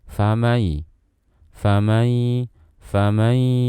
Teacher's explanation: kita tidak mengeluarkan suara sepenuhnya dari mulut, tapi kita akan membarenginya dengan suara gunnah yang artinya ada suara yang keluar lewat rongga hidung kita